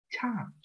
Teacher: Cái chữ cha này, cha bật hơi.